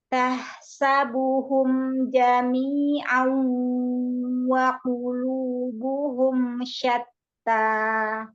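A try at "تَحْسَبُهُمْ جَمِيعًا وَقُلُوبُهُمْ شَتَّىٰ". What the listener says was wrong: Tapi wawnya agak wah, agak naik ya. Wa, tipiskan. Jami'an wa.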